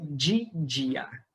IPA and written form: d͡ʒe d͡ʒia (de dia)